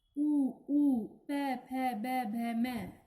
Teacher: इन्हें बोलते समय हमारे दोनों होठ आपस में एक दूसरे को स्पर्श करते हैं, तो ये ओष्ठस्य व्यंजन कहलाते हैं